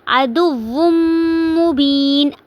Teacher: آواز کو ناک میں لے کے جائیں گے